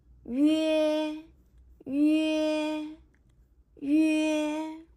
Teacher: First pronounce the simple vowel yu, and then move to e quickly. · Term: rising compound